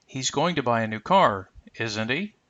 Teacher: So you can notice we're going to rise there on the word he. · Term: rising intonation